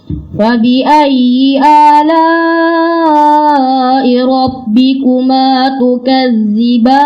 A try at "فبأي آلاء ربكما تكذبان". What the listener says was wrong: Kurang keluar lidahnya. Tukazzi. Itu kalau tidak keluar harus keluar. Tukazzi mengalir suara. Tukazzi.